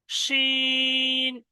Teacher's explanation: আচ্ছা, এই অক্ষরটার নোক্তা আছে তিনটে, দুটো একই রকম অক্ষর, শুধু নোক্তার পার্থক্য। শিন, এই অক্ষরটা উচ্চারণ হবে জিভের মাঝখান দিয়ে, জিভের পুরো মাঝখান এবং ওই সোটা উপরের তালু। শিন, শিন বলার সময় দেখবেন জিভটা উপরের দিকে একদম এরকম মানে ছড়িয়ে যাবে।